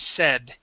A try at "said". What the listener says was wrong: Okay, give me a D at the end there.